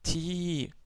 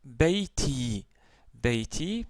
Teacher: la voyelle longue Ya, ça nous donne le son Ti, donc Ti prolongé, Ti, comme dans Beiti.